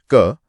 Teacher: इसे बोलने में कम हवा निकलती है और गले में कंपन नहीं होता। तो यह हुआ अल्पप्राण और अघोष।